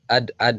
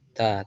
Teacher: Kemudian huruf dal dia sifatnya syiddah, kuat. Berbeda dengan huruf ta, dia rokhawah, lembut.